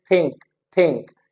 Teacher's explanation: in Pakistani English we pronounce this sound as थ